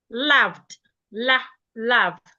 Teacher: it is a mid vowel, a central vowel